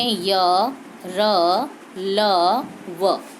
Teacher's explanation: अंतस्थ व्यंजन। जब हम इनका उच्चारण करते हैं तो जो हमारी जीभ का स्पर्श है वह मुख के अंदर किसी भी विशेष भाग से नहीं होता।